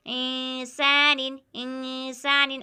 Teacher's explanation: یہاں پر بھی نون ساکن ہے، نون ساکن کے بعد سین آیا ہوا ہے حروف اخفا میں سے، تو یہاں پر بھی اخفا ہوگا، یعنی آواز کو ناک میں چھپائیں گے۔ اخفا کے معنی ہے چھپانا۔